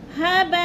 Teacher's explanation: مد متصل جیسے ہباء، 4 الفی مد ہے، 4 حرکات کے برابر ہم نے اس کو کھینچ کر پڑھنا ہے